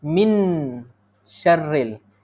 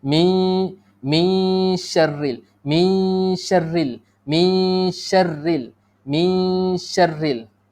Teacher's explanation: Lidah tu jangan sentuh lelangi atas. Kalau sentuh, min dah jadi izhar. Jangan sentuh. Dia tergantung sikit. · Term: ikhfa